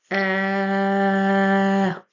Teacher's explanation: I want you to start with uh and then stop with a glottal stop